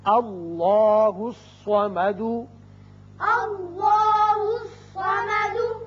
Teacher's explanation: الف پر زبر ہے لہذا اس میں اللہ کا لام پر کر کے پڑھا جائے گا